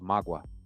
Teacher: Magwa with the stress on the last syllable